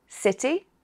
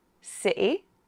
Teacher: the letter T can be pronounced in different ways. With a T, city, with a glottal stop, city, or with a small D